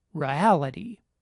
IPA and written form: ɹə.æ.lɪ.ɾi (reality)